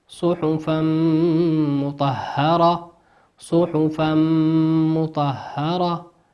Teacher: تنوين أتى بعده حرف الميم، والميم من حروف الإدغام بغنة، يغن بمقدار حركتين